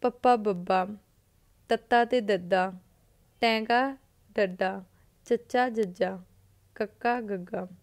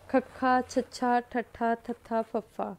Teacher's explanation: ਅਲਪ ਪ੍ਰਾਣ ਹੁੰਦਾ ਹੈ ਜਦੋਂ ਹਵਾ ਦੀ ਮਾਤਰਾ ਘੱਟ ਲੱਗਦੀ ਹੈ, ਤੇ ਮਹਾਂਪ੍ਰਾਣ ਜਦੋਂ ਹਵਾ ਦੀ ਮਾਤਰਾ ਜ਼ਿਆਦਾ ਲੱਗਦੀ ਹੈ। ਮਹਾਂ ਦਾ ਮਤਲਬ ਮਹਾਂਪ੍ਰਾਣ, ਕੁਛ ਜ਼ਿਆਦਾ ਹੋ ਰਿਹਾ, ਹਨਾ, ਜ਼ਿਆਦਾ ਮਤਲਬ ਹਵਾ ਦੀ ਮਾਤਰਾ ਜ਼ਿਆਦਾ ਲੱਗਦੀ ਆ। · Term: ਅਲਪ ਪ੍ਰਾਣ ਤੇ ਮਹਾਂਪ੍ਰਾਣ